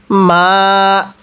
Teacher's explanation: এই মিম এর মধ্যে আমরা তিন আলিফ টান দিব